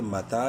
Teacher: ایک الف کے برابر لمبا کریں گے تا کو کھڑی زبر کی وجہ سے